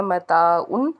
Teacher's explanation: قاعدہ ہے، وَمَتَاعٌ إِلَىٰ حِینٍ، الف سے پیچھے زبر ہے تو متاع جو ہے اس کو ہم نے ایک الف کے برابر اس کو کھینچ کے ادا کیا